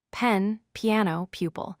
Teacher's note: When you say the P sound, your lips come together and then push air out suddenly